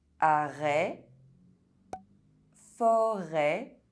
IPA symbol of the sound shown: ɛ